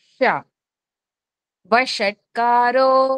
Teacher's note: కి నాలికను పక్కకు పెడతాము. ష ష స ష ష షణ్ముఖ షకారం ష అనేది ఏంటంటే బండగా పలుకుతాము నాలికను పూర్తిగా వెనక్కి లాగి · ష అనేది ఏంటంటే బండగా పలుకుతాము. నాలికని పూర్తిగా వెనక్కి లాగి ష. వషట్కారో మనకి మొదటి శ్లోకంలోనే వస్తుంది కదా, వషట్కారో.